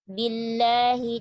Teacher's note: Lamnya jangan tebal, bacalah dengan tasdid.